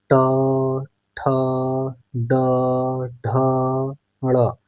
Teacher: यानी कि आपने देखा कि जो ट है वह मुंह के ट का उच्चारण जब हम लोग कर रहे हैं ट वर्ग का, तो मुंह के मूर्धा वाले हिस्से को छू रही है हवा, वहां से टकराकर बाहर निकल रही है। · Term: मूर्धन्य